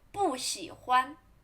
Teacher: When 不 is before third tone, it should pronounce in fourth tone.